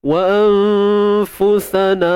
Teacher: Ikhfa hakiki tuan-tuan dan puan. Nun mati bertemu fa. Sembunyikan nun, jangan sebut nun tepat pada makhrajnya.